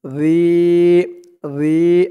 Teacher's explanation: এক আলিফ টান, জেরের পরে ইয়া সাকিন